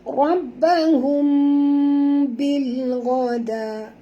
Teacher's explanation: mim mati bertemu ba, kita kena dengung tuan-puan ya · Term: ikhfa syafawi